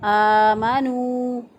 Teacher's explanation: آمنوا نون پر پیش واو نو ہے، واو ساکن سے پہلے والے حرف پر پیش تو واو مدہ ہے، ایک الف کے برابر اس کو بھی لمبا کیا